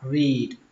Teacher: Âm y ở đây là âm y dài, các bạn phải kéo nó ra, read, và kết thúc bằng âm đờ, read.